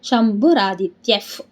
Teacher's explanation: ವಿಸರ್ಗದ ಮುಂದೆ ಪ ಇದೆ ಅದಕ್ಕೆ ನಮಗೆ ಏನಾಯ್ತು ಅಲ್ಲಿ ಅರ್ಧಫ ಆಯ್ತು